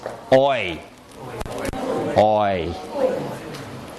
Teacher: moves towards a kind of I sound it's oi oi okay starts back moves forward and raises slightly your tongue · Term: D thong